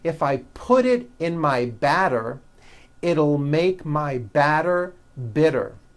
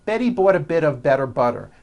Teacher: notice that you do not hear any T sounds they're only DS which are voiced